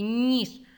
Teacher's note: у слові ніж перше звук н але він м'якенький ніж а потім іде і він голосний А у нас тут переплутаний